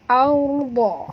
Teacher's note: Huruf ra ini bila dia mati, huruf sebelumnya baris atas kena baca tebal.